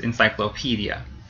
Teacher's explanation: so the PE syllable gets stressed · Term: stress syllable